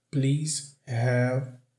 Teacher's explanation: Aqui ele não pronuncia o V.